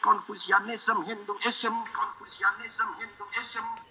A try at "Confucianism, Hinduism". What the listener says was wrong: He's emphasizing the ism. It should be like Hinduism, Confucianism.